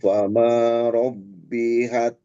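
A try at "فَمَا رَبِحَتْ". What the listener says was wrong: Robihat. Nggak ada tasydid.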